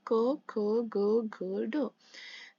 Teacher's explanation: जब हम क बोलते हैं तो गले से आवाज आती है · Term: कंठ